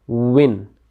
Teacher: वाव को पढ़ते हुए हमने लिप्स को राउंड करना होता है, होंठों को गोल करना होता है